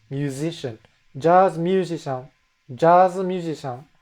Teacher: when they say jazz, it's a hard J. But when they say musician, it's suddenly a soft Z